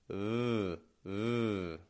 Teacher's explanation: We bring that bottom lip up and we touch the top teeth with it. V, V. I'm not making a lot of pressure on my teeth. · We focus on the bottom lip, not the corners of the lips, not a W, but just a V. We bring that bottom lip up and we touch the top teeth with it.